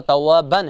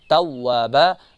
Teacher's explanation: اصل میں یہاں پر توابن ہے لیکن ہم پڑھیں گے توابا، یہ جو ایک نون ساکن ہے اس کو الف میں تبدیل کریں گے تو یہاں پر کیا ہوگا، وقف ابدال ہوگا، تبدیلی ہو گئی اس میں، اور یہاں پر مادی عوض بھی ہیں دوسرا نام اس کا، ٹھیک ہے۔